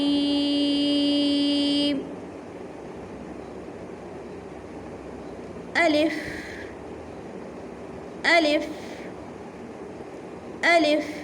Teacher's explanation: الف کو میں نے منہ کے خالی حصے سے ادا کیا ہے